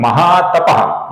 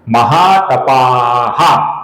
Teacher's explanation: अकारांत और विसर्ग ये गलत उच्चारण है। महा तपाहा आ के आगे विसर्ग आहा ये सही उच्चारण है